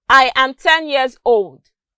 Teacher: There's a drop in the pitch of my voice when I got to old. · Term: falling intonation